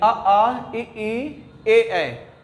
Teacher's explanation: जिसके उच्चारण में हमारा ओष्ठ वृत्ताकार नहीं होता है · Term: अवृत्तमुखी